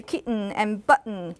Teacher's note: kitten and button belongs to the same pair, right? They are pronounced with glottal stop.